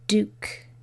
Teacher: we want to keep the U, which is that long U sound